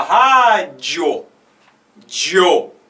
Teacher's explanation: Então, por exemplo, na palavra rádio, você fala rádio, dio. O O é mais forte na pronúncia do que o I. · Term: crescente